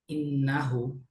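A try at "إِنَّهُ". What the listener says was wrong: ইন আরেকটু ধরে রাখি হ্যাঁ ইন্নাহু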